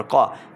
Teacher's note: قاف ہے حروف مستعلیہ سے موٹی آواز کے ساتھ پڑھیں گے